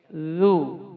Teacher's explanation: Ujung lidah di ujung gigi seri atas. Zu mengalir dia.